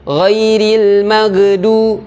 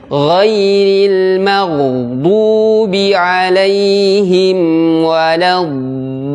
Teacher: goin ini merupakan huruf yang tebal. Jadi tidak boleh mantul. Ghairil magdu itu kesalahan.